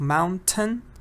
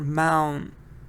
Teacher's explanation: In American you hear mountain, which is different. Like you don't hear T.